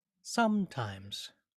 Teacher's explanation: in sometimes the first syllable some has more weight or accent or stress than the second syllable times